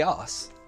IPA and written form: ʌs (ass)